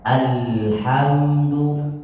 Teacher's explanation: bacanya tahan lam sedikit seakan-akan dia satu harakat